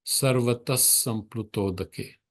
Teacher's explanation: the visarga after sarvataha disappears in the sa. It takes the sound of hissing. So it becomes sarvata samplutodake.